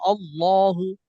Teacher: আল্লাহ শব্দের লামকে যখন ধরবো তখনই আমার মোটা করে ধরতে হবে